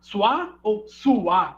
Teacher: o encontro da semivogal mais vogal pode oscilar entre a realização de iato ou como ditongo